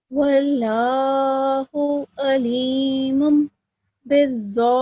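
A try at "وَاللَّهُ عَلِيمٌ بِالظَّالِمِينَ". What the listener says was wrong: So again, the meme was a bit short. And also in the very first word, Allah, the previous letter is carrying a fatha stroke, right?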